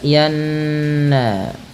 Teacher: Kemudian pada lafal falanuwalliyannaka qiblata, pada lafal yanna, tahan bunyi suara nunnya pada lafal falanuwalliyanna karena ia termasuk bacaan gunnah dengan menahan bunyi suara n-nya atau bunyi suara nunnya sepanjang 2 harokat.